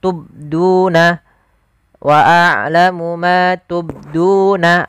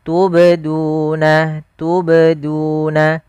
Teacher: Yang tepat adalah dia huruf qalqalahnya memantul sambil mengalir.